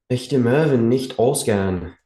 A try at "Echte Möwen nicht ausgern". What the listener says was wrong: Nicht ausgern. Yeah, be careful with the A because it sounded like gern. It's gern.